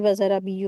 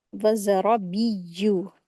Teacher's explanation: आयत 16 वज़्ज़राबिय्यु, यहाँ पर या के साथ, यहाँ पर ना बा के साथ या जो है वर्ड आया है, तो या के ऊपर शद्दा है, तो मिस्टेक लोग यही करते हैं कि वज़राबिय्यु पढ़ते हैं, जबकि ये क्या है? या के ऊपर शद्दा है, इसको अच्छे से 2 बार रीडिंग करी जाएगी।